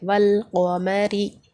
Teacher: تو یہاں پر را کے نیچے زیر ہے تو یہاں پر ہم را کو باریک پڑھیں گے